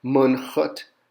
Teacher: it's pronounced ch, like the back of your throat